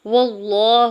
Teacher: واللہ، واو کے زبر کو لام جلالہ کے ساتھ ملاتے ہوئے پڑھنا ہے اور لام جلالہ کے اوپر کھڑی زبر 2 حرکت کھینچ کے ادا کریں گے